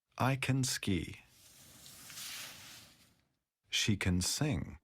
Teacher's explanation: when speaking quickly we often don't stress can we pronounce can as can in positive sentences I can ski